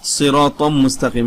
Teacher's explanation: এই মিম এসেছে ঈদগামে বাগুন্নার 4 হরফের 1 হরফ মিম এসেছে, অতএব তানবিনকে ঈদগাম করিয়া গুন্নার সহিত পড়িতে হবে